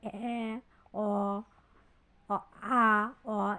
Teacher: যেসব স্বরধ্বনি উচ্চারণের সময় ঠোঁট বেশি খোলে সেগুলোকে বলে বিবৃত স্বরধ্বনি। যেমন অ আ অ এগুলো বিবৃত স্বরধ্বনি।